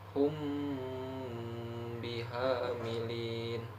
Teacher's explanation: membunyikan mim sukun dengan sedikit merenggangkan kedua bibir dan didengungkan serta ditahan selama satu setengah Alif atau tiga harakat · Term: Ikhfa Syafawi